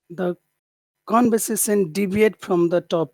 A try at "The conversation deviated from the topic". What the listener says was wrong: have to add an extra syllable. Deviated. Deviated.